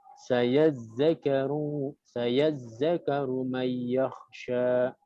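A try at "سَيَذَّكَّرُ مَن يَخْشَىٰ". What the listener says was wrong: Tasdid. Sayadzakaru. Tasdidnya itu ada dua, zal dan kaf.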